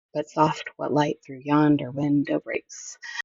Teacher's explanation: there's no emphasis on the first, emphasis on the second, sets of 2 syllables, that means it's iambic. And with 5 feet in that line, that's iambic pentameter or pentameter.